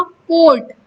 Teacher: या आपने कहा कोर्ट, आपको बोलने में भी टाइम नहीं लग रहा है और टंग की पोजीशन भी उसी जगह है, तो दिस इज कॉल्ड मोनोफ्थोंग